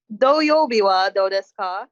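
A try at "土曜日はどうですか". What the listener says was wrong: Yeah, doyobi wa dou desu ka? It's a little bit short. Doyobi.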